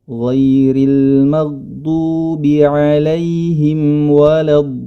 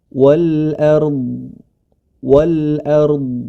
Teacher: Pada kata wal ard yang diwaqafkan sebagaimana yang kita baca, huruf dhad memiliki sifat istitalah, artinya suara yang memanjang. Jadi tidak langsung berhenti suaranya, tapi ada suara istitalah, ya, suara yang memanjang.